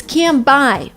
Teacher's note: I'm already shutting my mouth in order to pronounce the sound B. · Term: replace the sound N with M